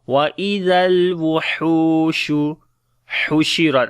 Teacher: On the lam tawassut. Hu we long due to waw madda.